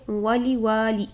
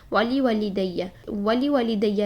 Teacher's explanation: پہلا واو جو ہے وہ 1 کاؤنٹ کے ساتھ پڑھیں گے اور دوسرے واو کو الف مدہ کرتے ہوئے ہم 2 کاؤنٹس پڑھیں گے